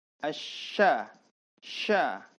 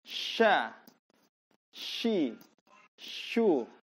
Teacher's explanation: tengah-tengah lidah itu diangkat ke langit-langit tapi tidak menempel. Diangkat kemudian dihembuskan udara. Asya, sya. Tengah-tengah lidah diangkat, kemudian udara dihembuskan. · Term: huruf shin